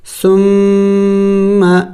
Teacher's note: میم مشدد ہے، میم مشدد پر اور نون مشدد پر ہمیشہ غنہ کیا جائے گا. تو ہم غنہ کریں گے یعنی ناک میں آواز لے کے جائیں گے